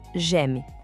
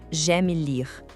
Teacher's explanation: Muita gente tende a falar j'aime, separado, mas o som é mais fechado e rápido, quase uma sílaba só